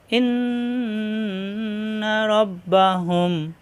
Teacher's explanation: এখন আমরা কিভাবে পড়বো মিম সাকিনের পরে বা আসলে এটা হলো মিম সাকিনের ইকফা অর্থাৎ ঠোঁটের ভিজা জায়গা থেকে উচ্চারণ করতে হবে হালকা এরপর গুন্না হবে ইন্না রব্বাহুম এখানে এই মিমই গুন্না হবে বা